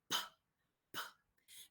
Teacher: All right, the second pair of pictures on the right corresponds to p, p, because in picture one, you can see that there is a complete obstruction between the upper and lower lip, like this.